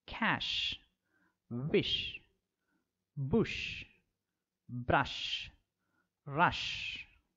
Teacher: The air escaping through the narrow gap between the hard palate and the front part of the tongue, producing audible friction or a hissing sound